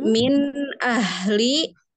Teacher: nun sukun bertemu dengan hamzah atau alif itu izhar halki. Tingkatan gunahnya nakisoh.